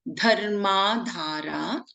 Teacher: Dha is Mahaprana, the first as well as the third letter.